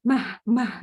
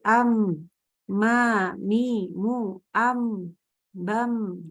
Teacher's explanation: Tempat keluarnya sama, sifatnya beda, hurufnya beda juga, gitu ya. Jadi huruf mim itu tentunya dia tidak disertai dengan keluarnya hembusan udara, hembusan nafas. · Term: jahar